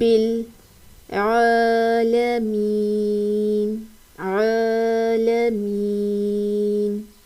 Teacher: عین کی ادائیگی وسط حلق سے کرنی ہے، حلق کا جو درمیان والا حصہ ہے وہاں سے عین کی ادائیگی ہوگی. یہاں پر اس کو حالمین نہیں پڑھنا، عالمین.